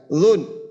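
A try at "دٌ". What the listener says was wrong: না জুন টান যেন না হয় আবার জুন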